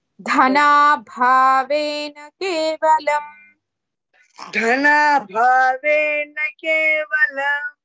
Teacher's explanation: ಧ ಅಂಡ್ ಭ both are ಮಹಾಪ್ರಾಣಸ್ · Dha and bha both are Mahapranas.